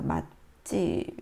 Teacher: 음절 끝소리 때문에 음절 불파 현상에 의해서 뒤에 있는 소리가 이제 예사소리가 된 소리로 발음됩니다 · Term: 된 소리 되기